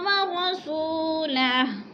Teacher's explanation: سو پہ وہ مدہ ہے، تھوڑا سا کھینچ کے پڑھیں گے، اور ہو کو بھی کھینچ کے پڑھیں گے، الٹا پیش ہے۔